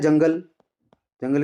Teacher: सिर्फ बिंदी लगी हुई है एक बिंदी लगी हुई है देखो गंगा बोलेंगे ना आप तो सिर्फ नाक से आवाज आएगी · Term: अनुस्वार